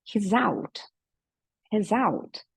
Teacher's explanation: no lugar desse S, um som mais de Z, né? Porque vai até ter um som bem parecido com Z.